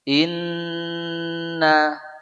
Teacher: Inna dua-duanya ghunnah tahan jangan tergesa-gesa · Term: gunnah